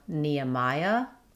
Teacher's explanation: In Nehemiah, we link between the Nya with a gliding Y sound and between the Maya with another gliding Y.